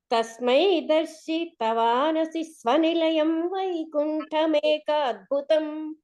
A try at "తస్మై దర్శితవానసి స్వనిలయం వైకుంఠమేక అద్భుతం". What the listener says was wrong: అక్కడ తస్మై దర్శితవాన్, ఆ తా దగ్గర స్ట్రెస్ అక్కర్లేకుండా తస్మై దర్శితవానసి స్వనిలయం అంటే ఇది అక్షర దోష విషయం కాదు, స్ట్రెస్ విషయకమైనటువంటి.